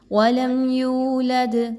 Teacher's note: وَلَمْ يُولَدْ، میم ساکن کے بعد یا کا حرف دوبارہ آ گیا، اظہار شفوی کیا جائے گا، غنہ نہیں کیا جائے گا بلکہ بہت کلیئرلی میم کی آواز کو پڑھ کے اگلا جو حرف ہے اس کو اٹھایا جائے گا۔ یولد، واو پر جزم کا نشان ہے اور یا پر پیش ہے، تو جب بھی واو جو ہے وہ ساکن ہو اور اس سے پہلے والے حرف پر پیش ہو تو ایسے کو واو مدہ کہا جاتا ہے۔ · آگے دیکھیں تو دال پر جزم کا نشان ہے اور دال پر جب بھی سکون کا نشان آئے گا تو آپ نے اس دال کو ہلا کے پڑھنا ہے، قلقلہ کو فالو کرنا ہے